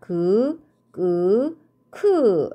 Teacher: 혀뿌리가 여린 입천장을 막았다가 떨어지면서 나는 소리라고 했죠